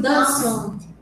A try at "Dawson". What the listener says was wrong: You don't pronounce the E. Dawson. This A and W you say Dawson.